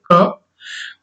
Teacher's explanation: क बोलने में हमारे मुख विवर से जो है कम वायु प्रवाह बाहर होगा, वायु का प्रवाह कम होगा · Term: अल्पप्राण